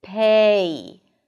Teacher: there are two vowel sounds within the first syllable, the first unit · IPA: /peɪ/